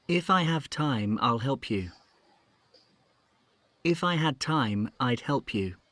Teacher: it's clear that have and had, they are stressed. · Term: strong form of have